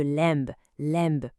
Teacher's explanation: Ou le B final de lamb, lamb pour un agneau qui passe complètement à la trappe.